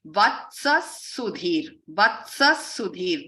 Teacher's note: when a Visarga is followed by an S, then it becomes like a double S sound